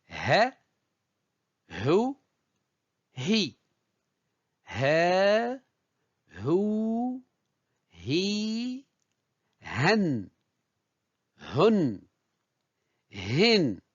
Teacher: donc la 26e lettre de l'alphabet l'équivalent du h aspiré l'anglais se prononce au niveau du fond de la gorge exactement au niveau du larinx et des cordes vocales